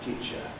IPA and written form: ˈtiː(clipped)ʧə (teacher)